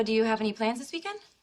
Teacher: Rising intonation to show it's a question